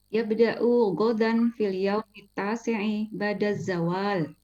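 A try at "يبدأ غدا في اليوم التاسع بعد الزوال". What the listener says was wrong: Masyaallah.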